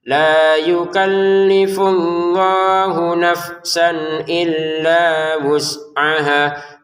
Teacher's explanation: Fa sukun, sin sukun. Dua-duanya jangan dipantulkan. Jangan dibaca nafsan ya wah.